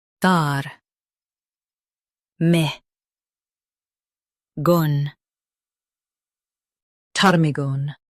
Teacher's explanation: Stress tar and keep migan soft.